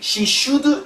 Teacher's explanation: should very short it's that schwa sound